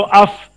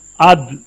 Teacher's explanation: फा में नरमी है, सहूलत है, आसानी है, और दाल में मजबूती और जमाव है